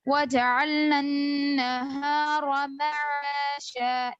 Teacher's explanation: और वजअलना, वज पढ़ रहे हैं, जीम पे खलखला नहीं होगा, जीम पे हरकत है, तो वज अलग अलग पढ़ेंगे, वजअलना अन्नहार माशा, इस तरह, ठीक है?